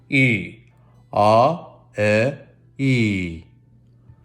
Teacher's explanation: it should feel like your tongue is very high up and the space between your soft palate and your tongue is a very small distance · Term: E vowel